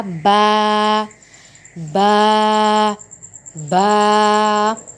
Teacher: دونوں ہونٹوں کے اندرونی تڑی والے حصے کے ملانے سے۔ جو ہمارے ہونٹ ہے نا، ان کے اندر ایک گیلا حصہ ہے ہمارا، اوپر بھی اور نیچے بھی، ان دونوں کو جب ہم آپس میں ملائیں گے تو ہمارا یہ لفظ نکلے گا با، با، با۔